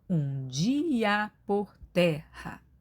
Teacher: Então, aqui não há a elisão, a junção numa única sílaba das vogais i e a. Portanto, nós temos mais uma vez até a última sílaba tônica, que é ter, da palavra terra, que é paroxítona, cinco sílabas, tá?